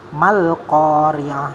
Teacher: mal ko-nya panjang 2 harokat, ri'ah sama ya.